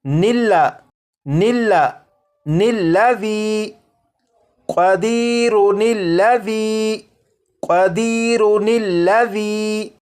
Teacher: نون کو لام کے ساتھ ملا کر پڑھیں گے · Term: نون قطنی